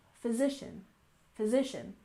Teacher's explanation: And physician, we stress the second syllable, physician, physician